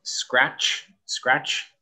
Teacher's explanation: You don't really say the T.